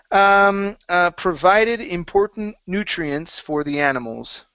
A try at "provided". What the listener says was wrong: Okay, nutrients was good. Give me a better V on provided.